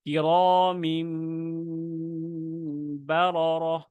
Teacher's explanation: তো আপনার যখন এই তানবিনের পর আসবে, নুন সাকিন বা তানবিন মিম দ্বারা পরিবর্তন করে, তো আপনার গুন্না সহ আপনার এখানে তেলাওয়াত করতে হবে